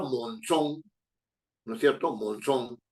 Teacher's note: Mon y son. El golpe de voz está en la última, entonces es aguda, pero termina en consonante N, entonces sí lleva acento.